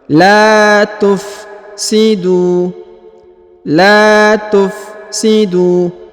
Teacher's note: La tufsidu. Huruf du dipanjangkan 2 harokat karena di depannya terdapat waw sukun dan alif yang di depan tidak dianggap atau tidak dibaca.